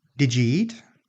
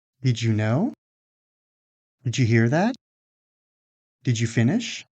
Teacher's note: when final d is followed by initial y, those two sounds can combine to produce the sound j, the sound you hear at the beginning of words like job or June.